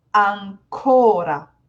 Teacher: I'm putting the main stress on the O.